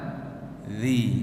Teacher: dia kena keluarkan sikit ujung lidah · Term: huruf zal